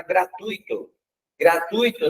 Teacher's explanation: Gratuito não tem acento. Esse U e esse I não tendo acento, eu pronuncio ele junto